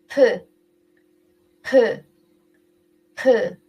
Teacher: And aspirated consonant. P, P, P. Much more air comes out.